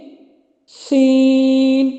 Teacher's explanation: سیٹی کی آواز آ رہی ہے اور کھینچا جائے گا کیونکہ یہ 3 حرفی لیٹر ہے۔